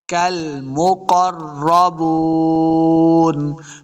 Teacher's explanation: ہے، قاف حروف مستعلیہ سے ہے، را کے ساتھ ملانا ہے، را مشدد ہے، را کو بھی پر پڑھیں گے